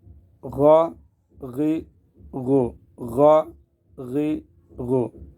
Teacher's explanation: غائن گلے کے اوپر سے بالکل، غائن خرخرا کی آواز جو آ رہی ہے، اس طرح کی آواز، خا اور غائن، خا اور غائن، حروف مستعلیہ میں سے زبان بھی اوپر اٹھے گی، پر بھی ہوگا۔